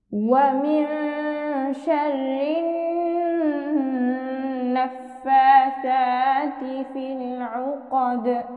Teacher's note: নুনের উপর তাসদিদ অর্থাৎ ওয়াজিব গুণনা, গুণনা সহ পড়ার কালার দেখতে পাচ্ছি। সহজ কোরআন শিক্ষায় যেখানে আমরা এই কালার দেখতে পাবো সেখানে আমরা গুণনা সহ পড়ব।